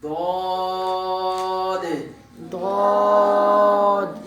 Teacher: دواد میں یہ ہوگا, صرف یہ تھوڑا فرق ہوگا کہ زبان جو ہے وہ سامنے والے دانتوں کے نیچے لگے گی, اندر کی طرف لگے گی تو دواد ادا ہوگا. باقی دانت وہ اسی طرح لگیں گے.